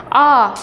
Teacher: आप उच्चारण करके देखिए तो आ हमारा मध्य से हो रहा है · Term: मध्य स्वर